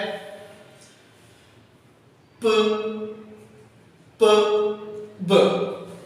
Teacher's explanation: सबसे पहले स्टॉप और प्लूसिव साउंड जो है ना हम उनको कहते हैं, तो यानी कि ऐसी साउंड जिसमें हवा जो है ना वो पहले हमारे मुंह में आके जमा होती है फिर उसके बाद रिलीज होती है, तो उन साउंड को हम स्टॉप या क्लोजिंग साउंड कहते हैं।